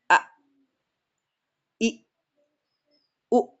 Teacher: Pita suaranya tertutup. Makanya ketika ada huruf hamzah disukunkan maka dia dihentak A. Sudah enggak bisa keluar huruf lagi.